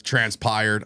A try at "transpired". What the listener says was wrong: Transpired? Transpired. No, you said transpired like pyro.